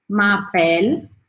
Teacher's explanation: para o som no L, o E no final não é pronunciado